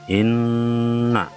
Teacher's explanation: di atas nun ada tasydid, maka dibaca mendengung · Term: gunnah nun